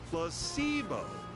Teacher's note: The stress is on the middle syllable.